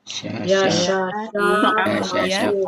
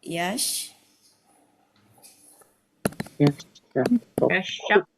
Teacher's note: Taknya berubah menjadi Shin.